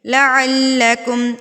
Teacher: لام کے اوپر تشدید ہے تو اس کو ہم شدت کے ساتھ پڑھیں گے، زور دے کے پڑھیں گے